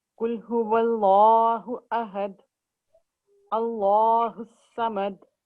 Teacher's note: लाम को थिक करते हुए, मोटा करते हुए फिर अदा करें, क्योंकि लाम के ऊपर तशदीद है और ये लामुल जलाला है